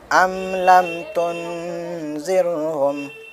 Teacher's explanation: اس کو ہم غنہ کے ساتھ پڑھیں گے تو اخفا ہوگا، ناک میں آواز کو چھپائیں گے